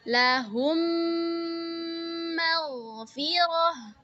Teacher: Nah, idgham mitlain itu yaitu memasukkan satu huruf ke dalam huruf yang bertasydid. Contohnya, mim sukun kita idghamkan ke huruf mim bertasydid. Maka cara bacanya digunnahkan 2 harokat.